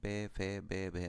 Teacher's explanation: जब आप प को बोलोगे फ को बोलोगे तो आपके दोनों होट मिलेंगे ऊपर वाले नीचे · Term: ओट व्यंजन